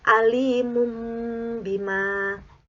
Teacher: yaitu hanya satu huruf iqlab yaitu bak Bagaimana cara cuacanya yaitu dengan mengganti atau menukarkan huruf nun sukun atau tanwin ini menjadi huruf mim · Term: bacaan iqlab